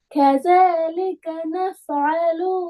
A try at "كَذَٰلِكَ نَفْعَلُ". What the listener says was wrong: இது கேட்டுச்சா நஃபாலு என்று பாட்டு படிக்கிற மாதிரி போகப்படாது அது பிறகு